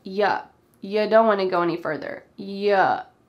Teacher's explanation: Our first here, you, is often reduced to Ya.